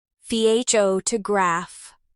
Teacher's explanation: in the word photograph, the stress is on the first part, pho to graph.